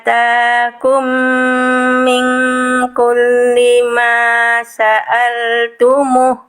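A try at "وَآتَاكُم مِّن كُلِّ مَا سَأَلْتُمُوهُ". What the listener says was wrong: Nah, muhnya gimana muh? Barusan kita bahas muh. Nah, muhnya apa? Panjang ya. Wa atakum min kulli ma sa'altumuh.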